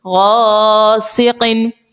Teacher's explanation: الف سے پہلے دیکھیے غین ہے, حروف مستعلیہ کا ہے, اسی لیے یہاں پر الف کو موٹا پڑھیں گے.